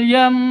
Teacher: Mim tasydidnya berarti gunnah musyaddadah. Jadi panjang dengung 2 ketukan.